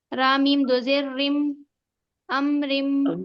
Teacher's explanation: ادغام ناقص ہوگا یہاں پر، ہم یہاں پر غنہ کے ساتھ ملا کر پڑھیں گے. امرم امرم رم، یہاں پر غنہ کریں گے، ملائیں گے بھی اور غنہ بھی کریں گے.